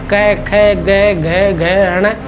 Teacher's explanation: यह क वर्ग यह इसकी ध्वनि कहां से निकलती है? कंठ से निकलती है।